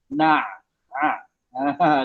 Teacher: huruf ain ni tempat dia di halkum bukan di hidung. Ramai orang Melayu dia letak huruf dia letak di hidung.